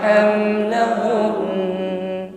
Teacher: tidak sekedar hamlahun ya, tapi dengungnya lebih masih terasa di situ, bukan hamlahun tetapi dipanjangkan dengungnya. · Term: guna yang sempurna